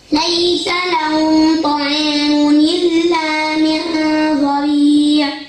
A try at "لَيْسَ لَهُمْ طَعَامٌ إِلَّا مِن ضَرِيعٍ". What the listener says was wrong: أولي هذيك الميم تما هذيك خاصك تبينها. ليس لهم طعام ماشي تقول لهم طعام صافي هذيك ما كاينش إخفاء تما ولا شيء كاين تما ميم باينة سكون ياك.